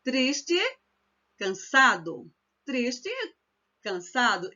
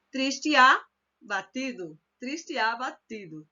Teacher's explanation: Então, é meio que engolir, entendeu? Engolir aquela vogal e ela se transforma em uma única sílaba. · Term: elisão